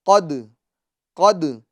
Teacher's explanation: یعنی دال کے اندر آواز کو ہمیں لوٹانا ہے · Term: قلقلہ